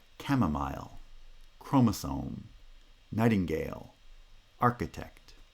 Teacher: the second syllable is a weak syllable in a foot so it's unstressed and therefore is pronounced with vowel reduction with schwa